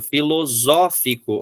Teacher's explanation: Filosófico, ó, esse é um som aberto, vai ser o agudo